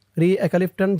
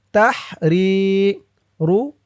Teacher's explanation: রি এক আলিফ টান, জেরের পরে ইয়া সাকিন,